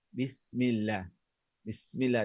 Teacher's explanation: Huruf sin ni makhrajnya ujung lidah dekat dinding gigi kacip bawah.